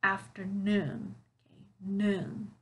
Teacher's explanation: can you hear where the stressed syllable is it's at the end of the word